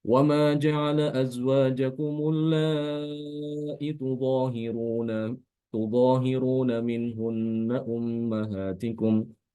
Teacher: dengan cara menghilangkan huruf mat setelah hamzah ya. Jadi hamzahnya tetap ada, ya, tidak dihadzaf, tapi dia yang dihadzaf itu adalah huruf mat setelah hamzah.